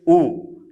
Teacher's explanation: जब हम ऊ बोलते हैं तो हमारा होठ क्या होता है? वृत्त के समान गोल हो जाता है, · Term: वृत्ताकार स्वर